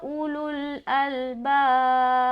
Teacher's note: बा के ऊपर स्टॉप करते हुए कलकला करेंगे क्योंकि बा का ज़ेर हटेगा और यहाँ पर सुकून यानी कि जज्म आ जाएगा.